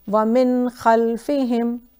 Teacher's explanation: نون سکون کے بعد خا ہے تو ہم نون کو الانگیٹ بھی نہیں کریں گے اور کلیئرلی کہیں گے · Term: رول آف اظہار